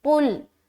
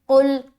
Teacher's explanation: قا کو موٹا رکھتے ہوئے لام سے ملا دیا